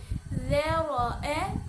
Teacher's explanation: اس میں را کے اوپر زبر آئی ہے، اسی لیے را کو پر پڑھیں گے۔